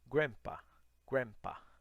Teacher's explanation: esse D não é necessário você falar